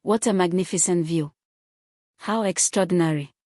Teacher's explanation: Falling intonation on an exclamation conveys strong, complete feeling. The nucleus, the most important syllable where the pitch change occurs, falls to a low pitch and signals finality or certainty.